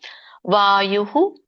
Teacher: ವಾಯುಹು ಅಲ್ಪವಾಗಿ ಹೇಳಬೇಕು ವಿಸರ್ಗ